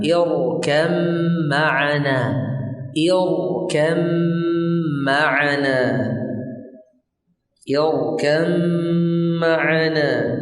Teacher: Khusus untuk mim bertemu dengan ba, khusus untuk ba bertemu dengan mim maka dibaca dengan gunnah yang dipanjangkan